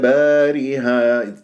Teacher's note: على ادبارها بهذه الطريقه يعني ما اميل ولا اقلل الالفات اديرها الداله مقلقله قلقله الصغرى ما امسكها ادبارها خطا اد اد اد ادبارها تضرب المخرج راسنا وتهرب الرام